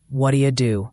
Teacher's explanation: What do you often becomes what do you the t in what becomes a d sound and do you becomes dia. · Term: quick blended sound